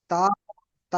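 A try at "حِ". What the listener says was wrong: হা হা, এখানে নোক্তা নেই, হা হবে, নোক্তা থাকলে তা হতো।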